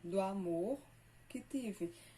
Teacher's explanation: 1, 2, 3, 4, 5, 6, 7. Aqui uma elisão, porque o do termina com O e o amor, que é a próxima palavra, começa com A.